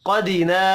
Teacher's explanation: क़ाफ़ हुरूफ मुस्तअलिया है, पुर पढ़ा जाएगा। अलिफ मद्दा एक अलिफ के बराबर खींच कर पढ़ेंगे।